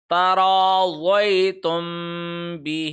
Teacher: ہے، یا کے اوپر جزم ہے، لمبا نہیں کریں گے، تم میم ساکن یعنی میم کے اوپر جزم ہے، آگے با آ رہا ہے لہذا تم میم کے اوپر غنہ کریں گے · ہے لہذا تم میم کے اوپر غنہ کریں گے، تراضیتم بہ، ہی کو ایک سیکنڈ لمبا کیا کیونکہ کھڑی زیر